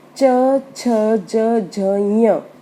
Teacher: जो जीभ का बिल्कुल पीछे का भाग है वो ऊपर तालू से टच होता है। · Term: तालव्य